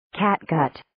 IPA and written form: 'kæt,gət (Catgut)